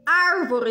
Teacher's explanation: ar é a antepenúltima sílaba, que é a mais forte, e sua classificação é proparoxítona, tá?